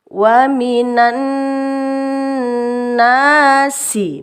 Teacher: Bacanya langsung masuk ke nunnya yang didengungkan, ennya, nan, begitu. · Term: idgham syamsiyah